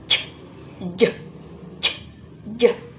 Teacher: Karena affricative ini yaitu merupakan kombinasi dari plosive dan juga fricative. Jadi ada desisan dan juga ada letupannya. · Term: affricate